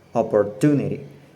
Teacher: Now I know that stress goes on the third syllable.